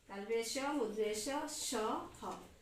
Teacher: ये जब वर्ण बोलते हैं हमारा मुंह के अंदर से एक गर्म हवा निकलती है, एक वायु निकलती है। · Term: ऊष्म व्यंजन